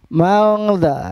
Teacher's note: Mangza, ini adalah ikhfa. Nun bunyi n-nya ini dibaca samar karena bertemu dengan huruf ikhfa yaitu zal.